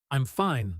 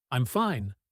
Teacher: Let the word fine rise slightly. Stretch a little. Maybe even shake just a touch. · First, say, "I'm fine." the confident way. Short, clear, falling firmly at the end, like everything truly is okay.